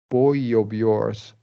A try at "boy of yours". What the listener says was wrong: I think you overthought it a little bit, Bowie and all this. boy, yeah, boy of yours. Or just make the vowel sound and connect with that Y.